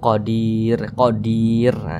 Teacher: Jangan dibaca qodirun jangan tapi dibaca Qadir kita matikan huruf rnya